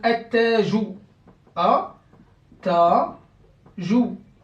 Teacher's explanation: Il vient de ce lam qui a été avalé. Donc c'est le lam qui a été avalé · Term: idgham